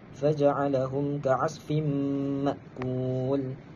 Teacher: Cara bacaan dia kita memasukkan tanwin kepada mim dengan bacaan dengung, bacaan ghunnah, qadar dua harakat. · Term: Idgham maal ghunnah